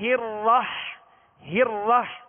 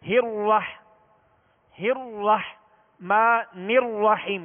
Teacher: را پر اب زبر ہے تو اب اس کو ہونٹ گول نہیں کرنا بلکہ آواز اور منہ کھول کر پڑھنا ہے